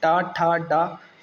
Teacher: इनको बोलते हुए हम रूप ऑफ द माउथ यानी कि मूर्धा को टच कर रहे हैं जीभ से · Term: मूर्धन्य व्यंजन